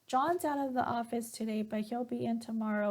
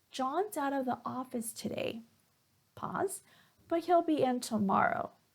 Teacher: So here, notice that I pause after the comma, okay, and I add pause after the period.